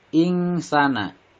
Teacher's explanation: Ing di sini adalah ikhfa karena nun mati bertemu dengan huruf sin, dibacanya samar dengan mendengung 2 harokat. Sa dinamakan mad tabi'i karena fathah bertemu alif, dibaca 2 harokat atau dibaca panjang 2 harokat.